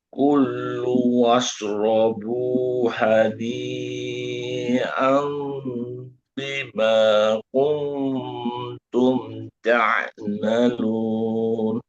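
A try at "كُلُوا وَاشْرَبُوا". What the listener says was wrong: Tapi jangan dou L.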